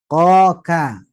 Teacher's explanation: lidah ini ada yang sangat banyak nih 18 Huruf apa saja yang keluar dari pangkal lidah